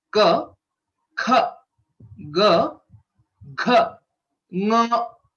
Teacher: the right way to pronounce is to note the exact place of origin of Ka and Nga are same. You can place your hand on your throat and observe the vibrations that you get when you pronounce these 5 letters: Ka, Kha, Ga, Gha, Nga. · The place of origin for all these letters is the Kantha. These are called gutturals in English, or Kantha Varnaha, Kanthastha Varnaha.